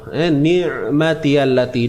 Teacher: Huruf ain ini kita matikan, jangan lupa sempitkan dia.